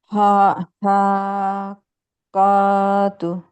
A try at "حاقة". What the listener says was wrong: কফি টান নেই তো আপু حاقة আরো একটা বাতাস সহকারে বের হবে, চাপ সৃষ্টি হচ্ছে কিন্তু বাতাসটা বের হচ্ছে না।